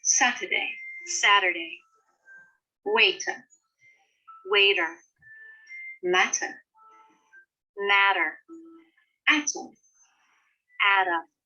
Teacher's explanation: it sometimes changes to a soft D. This happens either when it's between 2 vowels or when it's between an R and a vowel.